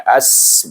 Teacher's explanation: hamzah ni digabung dengan sin yang mati, bunyi as, bunyi hamas dan safir